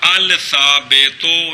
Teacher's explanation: لام کو سا کیا، سا کا سا میں ادغام کیا